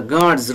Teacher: D, voiced consonant sound. And after that, S is pronounced as Z.